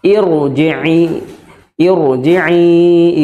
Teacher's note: Meskipun kasrah ya Hamzah wasalnya maka dibaca tebal